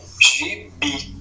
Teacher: Então, quando você pronuncia, ó, você vê que o bi é a última sílaba, né? É pronunciado de forma mais intensa do que o gi